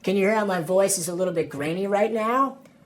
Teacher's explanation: California accents in general are famous for vocal fry, which is the sound your voice makes when you kind of let it sit in your throat.